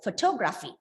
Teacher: it's the third syllable from the last so one two see the third last syllable is stress